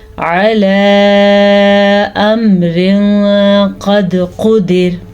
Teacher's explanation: रॉ को हमने पुर यानी कि मोटा करके पढ़ा है क्योंकि हमारे पास रॉ साकिन है और रॉ साकिन से पहले हमारे पास ज़बर है। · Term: रॉ पुर